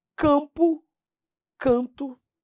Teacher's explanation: Pessoal, o dígrafo vocálico despenca em prova é muito simples. É o M ou N no final da sílaba, transformando aquela vogal em nasal.